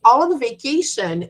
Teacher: Vacation is the last word. It's usually going down there. When we say on vacation, it goes down.